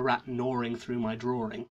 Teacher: Well, that's the intrusive part of intrusive R, inserting a R sound where no R exists in writing